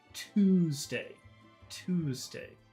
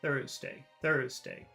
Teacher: Tuesday. You really have to move your lips when you say Tuesday. But when you say Thursday, you don't really. Thursday. See, you don't move your lips.